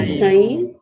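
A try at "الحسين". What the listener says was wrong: Apabila namanya ada alif lam, maka ucapkan alif lamnya. Jangan ditinggalkan, jangan disia-siakan. Al-Husainu. Kalau ada orang namanya Al-Ghazali, tetap ada alnya. Jangan bilang Ghazali saja. Husain atau Husainu?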